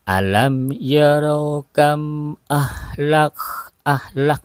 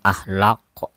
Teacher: Kaf ya Kaf itu bukan huruf q Jadi bukan Qalqalah jadi Kaf ini mempunyai sifat alhams ya alhams atau ada ada udara yang keluar dari mulut kita